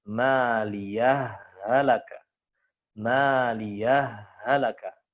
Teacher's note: Yang pertama dengan cara idroj, yaitu menyambung, ya, menyambung, yaitu dengan diidghamkan.